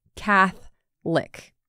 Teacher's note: There's an O in Catholic right in the middle, but we don't really pronounce that. Catholic, like you're licking someone named Cath.